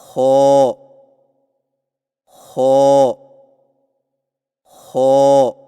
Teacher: خو کی ادائیگی میں زبان کی جڑ کو تالو کی طرف بلند کرتے ہوئے موٹی آواز میں پڑھیں، یعنی خو خو خو۔